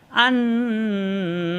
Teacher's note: হবে তাহলে এখানে হামজা জবর আলবে নুনের সাথে আন এই যে এক আলিফ অথবা দুই আলিফ পরিমাণ ধরে রাখতে হবে ধরে রেখে নাকের ভিতরে গুনগুন করতে হবে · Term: ওয়াজিব গুন্না